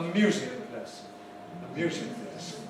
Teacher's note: Because what happens is that the first element is treated as stronger